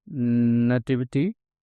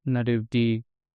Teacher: The T sound in British accent has changed into D sound in American accent.